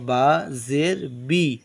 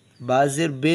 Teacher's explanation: जेर को मारूफ पढ़ा जाए और मजहू आवाज से बचा जाए जेर की आवाज नीचे को जाती है यानी गांव देहात में